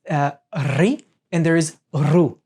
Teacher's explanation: this R with a dot underneath is a kind of rolling of the tongue inside of the throat